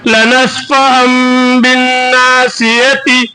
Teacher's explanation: تنوین کو میم سے بدل کر گننا کے ساتھ پڑھیں گے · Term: اقلاب